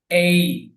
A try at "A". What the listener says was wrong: কিন্তু এটার উচ্চারণটা কি এ হয়?